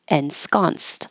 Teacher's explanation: The ED sounds like a T because the ensconce last sound is a voiceless S.